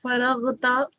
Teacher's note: را پر زبر ہے تو را کو موٹا پڑھیں گے